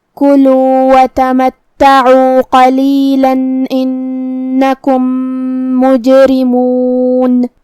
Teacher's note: کلمت تمتعوا میں یہاں حرف تا پہ تشدید ہے، لہذا 2 حرف کے برابر ہم تا کو پڑھیں گے کیونکہ تشدید کی اصلیت 2 حرف ہے. · حرف العین کو ہم حلق کے درمیان والے حصے سے پڑھیں گے